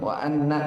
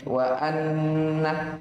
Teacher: Dia nun tasydid, hukumnya digunnah. Sekitar 2 harokat. Jadi jangan langsung wa anna, tapi wa anna.